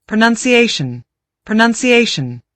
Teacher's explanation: Five syllables, and the stress mark is on the fourth syllable.